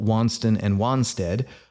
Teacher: the first vowels in for example wanston and wanstead are both pronounced ah